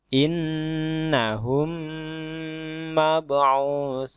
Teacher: sebagaimana hukum sebuah huruf yang bertasdid dia harus berdengung maka mim mati di sini harus didengungkan juga mimnya di sini seolah-olah mempunyai harakat tasdid seperti ini nih Nah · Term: idgham mimi